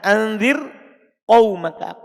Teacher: Sebelumnya ada huruf ro sukun. Ro sukunnya itu setelah kasro. Seharusnya bisa dibaca tebal ini, tapi karena beda kata dia tetap dibaca apa? Tipis. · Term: tetap dibaca tipis